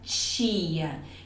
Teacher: no caso de tia, é como se eu juntasse o som de T com o som de CH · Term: sons africados